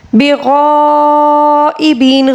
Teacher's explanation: غین کو پر اور اوپر جو مد متصل ہے اس کو 5 الف کے برابر کھینچ کر پڑھیں گے۔ ایبین، یہاں پر یا مدہ ہے، اس کو ہم 1 الف کے برابر پڑھیں گے، لیکن جب وقف کریں گے تو ہم یا مدہ کو 3 الف کے برابر کھینچ کر پڑھیں گے، ٹھیک ہے۔